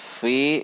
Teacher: bibir atas tidak ikut tetapi ujung gigi seri atas dengan bibir bawah bagian dalam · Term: makhroj huruf Fa